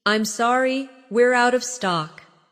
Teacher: Stress out of stock to make it clear.